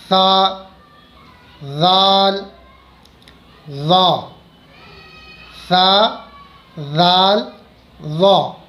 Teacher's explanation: جیسے مان لیجئے یہ ہمارے اوپر کے دانت ہیں، اوپر کے دانت، تو ان دانتوں کا کنارہ، نیچے والا سرا اور زبان، زبان کا سرا، یہ ہماری زبان اور اس کا یہ سرا، جب ہم سرا زبان کو اوپر کے دانتوں کے سرے سے لگائیں گے تب یہ لفظ ادا ہوں گے · سرا زبان اوپر کے دانتوں کے سرے سے مل کر کے یہ الفاظ ادا ہوتے ہیں